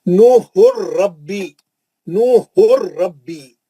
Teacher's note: تنوین کا ادغام بلا غنہ حرف را